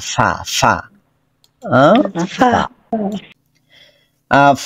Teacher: ফা যখন উচ্চারণ করব তখন উপরের দাঁত ও নিচের ঠোঁটের পেট উপরের দাঁত আইসা স্পর্শ করবে নিচের ঠোঁটের পেটের মধ্যে এবং ভিতরের থেকে বাতাস বের হবে